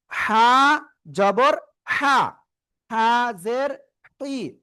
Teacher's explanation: গলার মধ্যখান হালকা চেপে আপনি এক আলিফ টেনে উচ্চারণ করবেন, মুখ দিয়ে হালকা বাতাস বের করে।